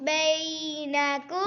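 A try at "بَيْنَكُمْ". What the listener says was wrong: لمبا نہیں کرنا. بی یہ یا مدہ نہیں ہے. بینکم.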